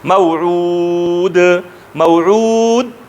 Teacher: دال مجهوره، دال شدیده، دال مستفله، دال منفتحه، دال مسمته او دا مقلقل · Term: قلقله